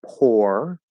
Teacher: so that's an R colored O, poor. Point is it's an O, it doesn't matter if it's R colored or not, but it's an O sound.